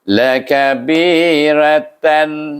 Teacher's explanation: Bunyi izhar. Terus dia tak ada dengung. Kalau izhar tak ada dengung. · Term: izhar khalqi